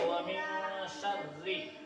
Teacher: یعنی تھوڑی دیر ناک میں آواز کو چھپا کر پڑھیں گے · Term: اخفا